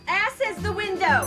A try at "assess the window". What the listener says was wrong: it's assess the window not ass is the window you put the wrong emphasis on the wrong syllable